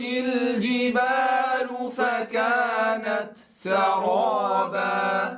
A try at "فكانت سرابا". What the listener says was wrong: لا نقول فكانت سرابا فكانت سرابا وإنما ننهي همس التاء ثم ننتقل إلى السين فكانت هنا انتهى زمن التاء فكانت سرابا